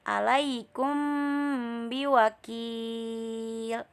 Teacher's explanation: Apabila ada mim mati bertemu dengan huruf ba, maka dibacanya samar. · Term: ikhfa syafawi